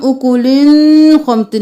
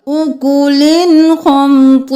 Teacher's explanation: اکولن خمطن نہیں کریں گے کیونکہ حروف ہلکی میں سے خو ہے، تو ہم کریں گے اظہار